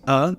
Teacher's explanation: the preposition of is reduced to another sound so we don't say of we say uh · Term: schwa sound